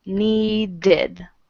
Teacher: like I'm sorry i d okay so need is want okay the Ed ending is ID and it makes another syllable need becomes needed just a second hello hi do